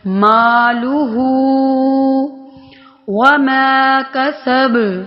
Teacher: با پر پھر قلقلہ ہو رہا ہے